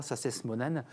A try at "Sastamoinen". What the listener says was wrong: Sastamoinen. Prononce toutes les lettres.